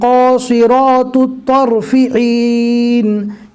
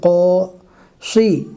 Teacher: یہاں پر دھیان سے پڑھنا ہے اس لیے کہ بہت سارے حروف کو پور پڑھا جاتا ہے، جیسے قاصی، صاد کے نیچے زیر ہے پھر بھی صاد کو پور پڑھنا ہے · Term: حروف مستعلیہ